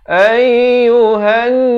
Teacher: Ayyuhan, ya bersabdu, tekankan ayyuhan. Di sini nun sabdu jangan lupa wajibul gunnah, wajib dengung 2 harakat